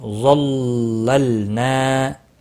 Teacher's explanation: وَظَلَّلْنَا ہے ظا مستعلیہ ہے، پر پڑھا جائے گا، لام ساکن کو ہلانا نہیں۔ ظللنا الف مدہ ہے، ایک الف کے برابر کھینچ کر پڑھیں گے